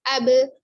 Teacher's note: Pada saat sukun, huruf ba harus dipantulkan. Jadi bukan ab saja, tapi ketika sukun abe, tapi dia lancar, ringan suaranya, tidak ab, nah, tidak diberatkan, tapi abe, seperti itu, ya. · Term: qalqalah